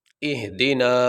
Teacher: آگے یہ نون ہے، نون کے اوپر زبر ہے، اس کے بعد یہ الف ساکن ہے، الف ساکن سے پہلے زبر آ گئی تو یہ حروف مدہ میں سے ہے، حروف مدہ کو لمبا کیا جائے گا